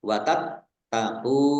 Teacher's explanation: Nun domah wawu sukun mat tobi'i, panjang 2 harokat, watat tahu, taknya dibaca double, ada tasdidnya